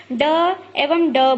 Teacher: जिन वर्णों के उच्चारण में जीभ जो होती है वो उल्टी नोक तालु को छूकर झटके से हट जाती है। जैसे कि आप ड एवं ड बोलेंगे तो आपकी जीभ उल्टी भी हो जाती है, ऊपर से लगती भी है आपके मुख के भाग से और फिर झटके से बाहर आती है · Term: उत्क्षिप्त व्यंजन